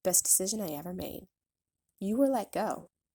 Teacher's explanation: creating a stop of air with the throat